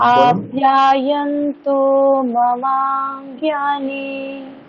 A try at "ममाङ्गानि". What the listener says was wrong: হ্যাঁ, জ্ঞানী এখানে কিন্তু জফলা নেই, জ্ঞানী হবে না, গানি হবে, গানি। মমাঙ্গানি বলুন। ওম আপ্যায়ন্তু মমাঙ্গানি।